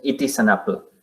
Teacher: en la frase it is an apple de repente la pronunciamos como una única palabra de principio a fin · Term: concatenación